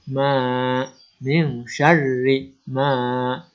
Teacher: maka ini dibaca panjang. Ini disebut dengan mad tabi'i atau mad asli. Dibaca panjang 2 harokat.